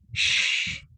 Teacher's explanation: Lidah tak rapat. Dia akan ada ruang. Ruang itu yang sempit ini akan menghasilkan bunyi shh. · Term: shin